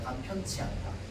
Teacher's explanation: 울림 소리 뒤는요, 거센 소리가 나옵니다.